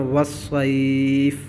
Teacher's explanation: یا لین کے بعد والا حرف وقف کی وجہ سے ساکن ہوا ہے تو اس کو بھی ہم لمبا کر کے پڑھیں گے، ٹھیک ہے۔ پھر اس قاعدے کو آپ دوبارہ دیکھ لیجئے، اگر حروف مدہ یا حروف لین کے بعد والا حرف وقف کی وجہ سے ساکن ہو جائے، ٹھیک ہے، تو وہاں ہم مد کریں گے، اس کو مد عارض کہیں گے۔